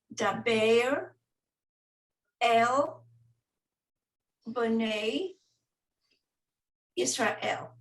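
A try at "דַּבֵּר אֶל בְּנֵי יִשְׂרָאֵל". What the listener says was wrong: Perfect. Thank you.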